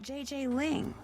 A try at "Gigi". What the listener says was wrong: En français, you pronounce G like J and J like G. She may very well be JJ in America, but in France, she is Gigi.